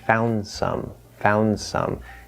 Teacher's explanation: That D just disappears.